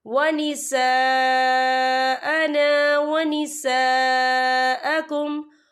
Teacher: ان دونوں جگہوں پر 4 حرکت کے برابر کھینچ کے پڑھا جائے گا، کیونکہ خالل سے پہلے زبر ہے اور اس پر مد بھی ہے، ہم اسے 4 حرکت کے برابر کھینچ کے پڑھیں گے۔